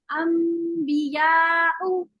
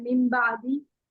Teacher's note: तो क्या करते हैं, हम नून को मीम से बदल देते हैं, और गुन्ना तो दोनों में ही मौजूद है, मीम में भी और नून में भी, है ना। तो दोनों को नाक से आवाज निकल जाती है और आवाज जो है वो मीम की निकलती है, क्योंकि हम मीम जो है वो होठों को मिला के मीम पढ़ ली।